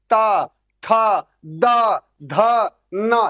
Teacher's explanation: आपकी जो जिह्वा है, यानी जो आपकी जीभ है, ये जो ऊपर वाले दांत हैं उसको जाके टच कर रहा है